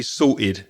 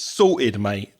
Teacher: So I have that glottal stop.